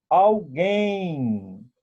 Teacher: No final de palavras, a vogal ao lado da consoante M tem um som, o M tem um som de U. Então, se torna um ditongo nasal.